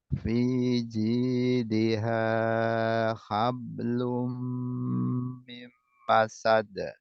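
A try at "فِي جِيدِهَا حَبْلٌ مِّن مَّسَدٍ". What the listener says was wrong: Fiji di ha, bukan he, tapi ha.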